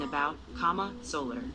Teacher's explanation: A schwa, in many unstressed syllables